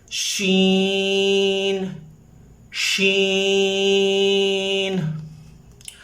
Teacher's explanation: حروف شجریہ کا مخرج بہت آسان ہے، تالو کا درمیان اور زبان کی درمیان یہ پورشن جو ہے شجریہ پورشن ہے، یہاں سے تالو اور زبان بالکل چھتری دار درخت کی طرح ہے، لہذا شجریہ اس پورشن کو کہتے ہیں۔ زبان اور تالو کے درمیان سے یہ حرف ادا ہوتا ہے، آواز پھیلے گی منہ میں۔